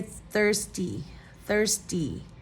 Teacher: it's actually the D sound instead of T